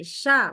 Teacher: bukan pakai Ujung lidah pakai Tengah lidah Tengah lidah S Lebih baik coba sekarang di depan iw waj